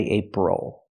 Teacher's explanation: because the stress is on the first syllable ape the second syllable o is not stressed